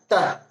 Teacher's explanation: तो तह में जो है वह त हलंत जोर ह हलंत का उच्चारण होता है। ये जो विसर्ग का जो उच्चारण है वह ह के रूप में हो रहा है